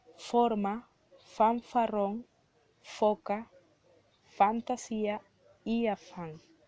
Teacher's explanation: Podemos observar dentro de los ejemplos, al momento de articularlas, sentimos la interacción que obtienen los dientes superiores con el labio inferior al pronunciar este fonema · articulaciones consonánticas cuyo órgano activo es el labio inferior y cuyo órgano pasivo es el borde de los incisos superiores. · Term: labiodentales